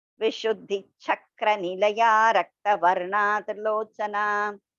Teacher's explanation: So don't break in between Nilaya Raktavarna. It should be a continuous one.